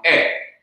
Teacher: there is a change of the vowel from a long E sound to a short E sound, So it changes from the two dots, the sire, the long E sound, to a segol, the upside down triangle, a short E sound E.